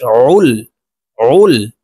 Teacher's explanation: আইন হলকের মধ্যখান থেকে চাপ দিয়ে উচ্চারণ করতে হবে। আইন লাম পেশ উল, উল।